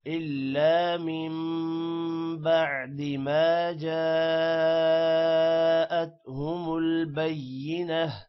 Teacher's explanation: جا پر مد ہے، الف پر مد ہے، اس وجہ سے اس کو لمبا کریں گے